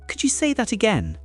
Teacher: how could you almost melts into one sound · Hold it in your head, hear the little rise at the end. · The rise is gentle, not dramatic. Otherwise it sounds like a complaint, not a request.